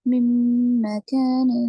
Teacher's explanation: نون ساکن کے بعد میم ہے تو یرملون مع الغنہ، غننے کے ساتھ پڑھیں گے